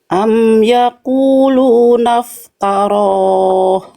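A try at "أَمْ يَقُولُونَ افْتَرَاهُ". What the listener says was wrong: Nah, di huruf tanya tinggal ditipiskan, jangan taruh, jangan ikut tebal. Itu huruf tebal, huruf tipis, Ibu Cucun. Nah, jadi tipiskan, jangan to, tapi ta, ya. Am yaquluna iftara. Yang tebalnya hanya si huruf ro-nya aja, ya.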